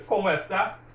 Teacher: you hear me stressing the O in como because there's an accent there. And also the A in estás because there's an accent there.